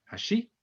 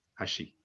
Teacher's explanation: there is a rising and falling intonation which is used in Japanese to distinguish between homophones. So, for example, the word for bridge and the word for chopsticks are both hashi.